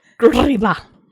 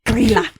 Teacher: It looks like Grilla, but they want you to roll the R